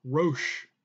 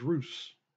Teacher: Greek does not have a sh sound, so it uses a s sound instead. And the vav in Rosh could also be pronounced u.